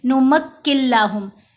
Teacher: نون مرج ہو گیا لام کے اندر، غنہ نہیں کیا